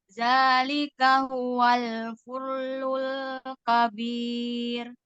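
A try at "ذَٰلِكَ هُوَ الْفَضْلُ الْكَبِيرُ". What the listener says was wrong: Fadlul, bukan fudlul, doma, bukan doma patah. Fadlul.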